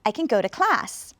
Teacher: you should have heard go and class and class was a strong strong one